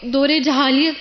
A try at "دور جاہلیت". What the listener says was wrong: یہ لفظ جاہلیت ہے، جہالیت نہیں ہوتا، سب اپنا پروننسیشن ٹھیک کر لیں، کیونکہ ہم بہت سے لفظ کتابوں سے جب پڑھتے ہیں تو صحیح نہیں پڑھتے۔ دور جاہلیت، ٹھیک ہے، پھر پڑھیے آپ۔ جاہلیہ،